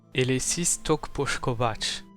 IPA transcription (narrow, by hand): e.le'sis tok poʃ.ko'βat͡ʃ